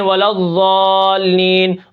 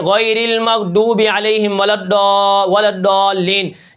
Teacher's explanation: ضاد کیا ہے، موٹا حرف ہے، اور کیا ہے، دال، ذال اور زا یہ باریک حرف ہیں۔